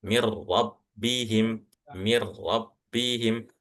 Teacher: Cara bacanya langsung masuk ke huruf setelahnya akan tetapi tanpa gunnah. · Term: idgham bila gunnah